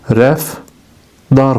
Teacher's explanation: Rəftar sözünün düzgün tələffüzü rəfdar formasındadır. Yəni, T-dı əvəzlənməsi baş verir.